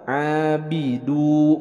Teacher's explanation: Ain dari wastul halki, dari tengah tenggorokan.